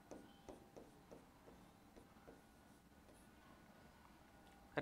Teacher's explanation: जीभ मुड़कर मूर्धा को टच कर रही है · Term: मूर्धन्य